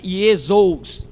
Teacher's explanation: no grego, o ditongo pronuncia-se U.